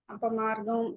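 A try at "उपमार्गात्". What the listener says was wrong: ఉపమార్గం కాదండి బాబు, ఉపమార్గం అది, అపమార్గం కాదు. ఉపమార్గాత్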